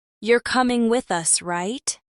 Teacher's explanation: Uptalk rises in pitch and is common in questions or when you're seeking confirmation.